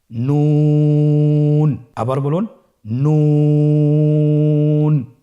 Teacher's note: নুন হরফটির উচ্চারণ স্থান হচ্ছে জিহ্বার আগা তার বরাবর উপরে তালুর সঙ্গে লাগিয়ে উচ্চারিত হয়। আপনারা স্ক্রিনে দেখতে পাচ্ছেন জিহ্বার আগা তার বরাবর উপরে তালুর সঙ্গে লাগিয়ে উচ্চারিত হয়।